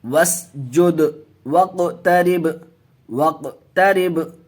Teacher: वस्जुद जुद कलकला होगा, कलकला करके पढ़ेंगे